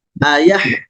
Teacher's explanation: pada huruf H-nya terdengar ada suara yang mengalir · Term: rokhawah